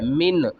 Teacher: نون کو ظاہر کر کے پڑھنا ہے